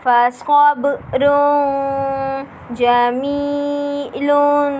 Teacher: تنوین کے بعد حروف اخفا کا جیم آ رہا ہے، اس لیے یہاں غنہ کر کے ادا کریں گے